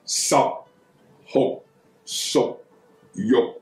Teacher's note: 十酷熟玉就是十▁P▁收音、酷▁K▁收音、熟▁K▁收音、玉▁K▁收音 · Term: 閉口陽入